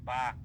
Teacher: বা হরফ পড়ার সময় আমাদের উপরের ঠোট এবং নিচের ঠোটের ভিজা অংশ ভিজা অংশ একসাথে লাগবে